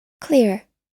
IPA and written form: klɪr (clear)